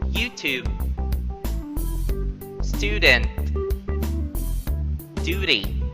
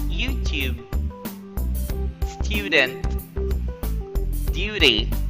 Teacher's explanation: the American will pronounce it as ooh, while in British they pronounce the U sound